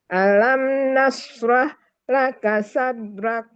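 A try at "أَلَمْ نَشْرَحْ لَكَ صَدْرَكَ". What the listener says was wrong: Nah, sodrak. Roknya bisa rok Bu, coba rok, jangan ra. Kita belajar rok gitu.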